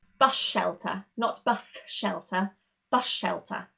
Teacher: We basically eliminate that S. We don't really want it. We convert it immediately into that sh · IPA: ʃ